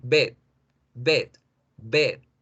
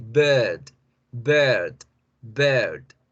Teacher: al alargar la vocal E, genero la vibración que crea la R